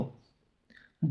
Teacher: ओष्ठी है, अल्पप्राण है और घोष वर्ण है। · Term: ओष्ठ अल्पप्राण घोष वर्ण